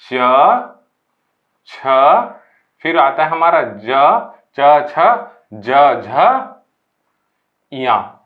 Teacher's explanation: तालव्य वर्ग मतलब जिसका उच्चारण हम लोग तालु से करते हैं